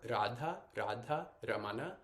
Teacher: line Radha so this R uh both in Radha and Ramana they're not quite rolled but it's like you're almost about to roll your R